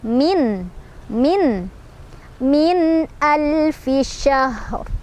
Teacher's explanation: Min ada izhar karena ada nun sukun bertemu dengan hamzah. Cara bacanya nunnya dibaca dengan jelas.